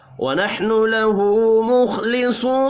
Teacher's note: الٹا پیش اور واو مدہ ایک ایک الف کے برابر کھینچ کر پڑھے جائیں گے. خواہ اور صاد کو پر پڑھیں گے.